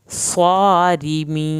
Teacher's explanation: मीम को आखिर में नहीं हिलाना, स्वारिमीन, स्वाद की खड़ी ज़बर, रा को यहाँ पे पुर नहीं करना, रा पतला पढ़ना है